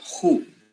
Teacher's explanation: the other has this glottal fricative at the beginning, making it who, okay? But the rest of the word is exactly the same.